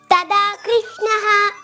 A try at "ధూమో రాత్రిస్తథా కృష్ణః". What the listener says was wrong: Oh very nice.